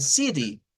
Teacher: cuando nos vamos, por ejemplo, al acento estadounidense, al acento americano, ahí es donde escuchamos que ellos no dicen city, sino que cambian la T y utilizan una D. De ahí dicen city.